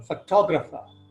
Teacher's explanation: the word accent of stress moves from the first syllable to the second syllable photographer